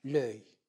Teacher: Ici, on parle d'illusion, parce que le E de l'article du déterminant est supprimé, elle tombe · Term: élision